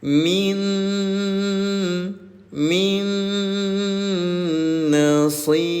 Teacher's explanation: Idgham bigunah. Dengungkan cara bacanya selama dua harakat.